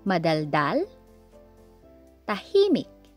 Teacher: Madaldal, stress on the last syllable, and tahimik, stress on the second one.